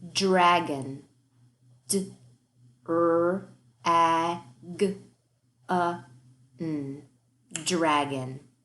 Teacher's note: Yeah, that dr, that's our tricky cluster and blend. That dr is really d-er. Make sure you hear both sounds on that.